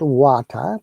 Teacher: in water um tea is prominent and r is silent